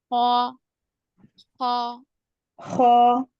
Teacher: खौ क्योंकि मोटे पढ़े जाने वाले हुरूफ में से, इसलिए हम मोटा पढ़ रहे